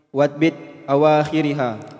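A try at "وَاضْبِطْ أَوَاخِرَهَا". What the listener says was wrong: Awakhirha, maf'ul bih. Fathah. Wadbit awakhiraha.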